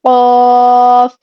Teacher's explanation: اس کا مخرج کیا ہے کہ زبان کی جڑ، ٹھیک ہے، زبان کی جڑ جب کوے کے قریب نرم تالو سے لگتی ہے تو قاف ادا ہوتا ہے